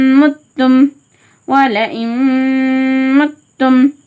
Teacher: இங்கே மீம் இடம்பெற்றிருக்கு, அதனால் இதுகாமுடைய மால்குன்னா சட்டத்தை அமல்படுத்தணும். அதாவது நூனை முற்றிலுமாக நீக்கிட்டு இம்மை சேர்த்து ஒரு அலிஃப்க்கு நிகராக ஹோல்ட் பண்ணி ஓதணும்